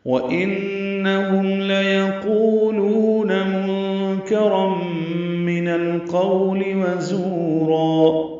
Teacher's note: نون مشدد پہ غنہ ہے، میم ساکن پہ اظہار شفوی ہے